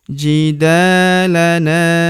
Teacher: Huruf da kita panjangkan dua harakat karena terdapat tanda alif di depannya yang ini. jidalana Huruf na kita panjangkan dua harakat karena terdapat tanda alif di depannya yang ini.